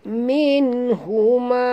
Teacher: Nun mati bertemu ha. Tak boleh dengung ya. Izhar. Izhar halqi.